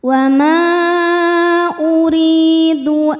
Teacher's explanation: Cara bacanya ro dibaca tipis. Ri madnya adalah mad thobi'i zohiri sebab ada ya sukun sebelumnya baris kasrah. Cara bacanya panjang dua harakat.